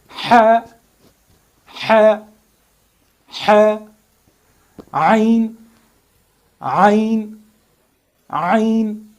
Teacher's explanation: And inside your throat, you should feel a kind of friction here at this part while articulating these letters. Arabs can very well hear this friction in these two letters, ha and ayn.